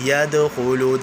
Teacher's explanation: دال ساکن، دال حرف قلقلہ، حرف قلقلہ ساکن ہو تو وہاں پر ہمیشہ قلقلہ کیا جاتا ہے، اس لیے یہاں پر قلقلہ کریں گے.